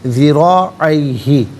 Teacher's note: را پر زبر ہے، پر کر کے پڑھا جائے گا